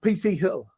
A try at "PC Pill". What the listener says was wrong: Because you don't pronounce the H.